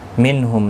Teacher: نون ساکن کے بعد ہا آئے، اظہار حلقی ہوگا